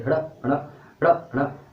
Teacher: तो उच्छिप्त होता क्या है, मतलब कि हमने जब उच्छिप्त वाले जो हम वर्ड बोलते हैं उनका उच्चारण करते हैं तो पहले तो हमारी जीभ ऊपर जाती है, फिर एकदम झटके से नीचे आती है, जैसे हड़ा, तो एकदम ऊपर गई फिर नीचे आई, पहले ऊपर गई फिर एकदम झटके से नीचे आई, हड़ा हड़ा हड़ा हड़ा।